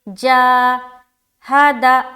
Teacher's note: الف مدہ کو ایک الف کی مقدار کے بقدر کھینچ کر پڑھیں گے